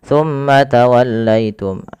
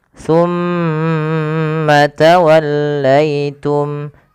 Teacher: Pada lafal summa ditahan dulu. Lafal mimnya ditahan. Jangan langsung dilepaskan.